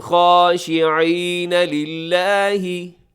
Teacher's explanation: اس میں آپ نے للہ کو باریک رکھنا ہے ، ٹھیک ہے، اسے للہ ایسے موٹا نہ کیجیے گا، یہ